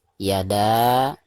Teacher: harus dipanjangkan, bisa 2 harkat, bisa 4 harkat dan 5 harkat, karena dihukumi mad jaiz munfasil